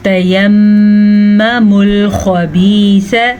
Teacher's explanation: خبیث خا کو پر پڑھیں گے